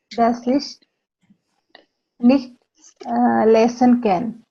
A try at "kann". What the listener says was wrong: kann. Can is English. Kann is German.